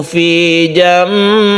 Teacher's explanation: Nun mati bertemu dengan ba, ini kita baca iklab yang berubah suara nunnya menjadi mem mati.